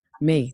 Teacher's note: neutral tone light and short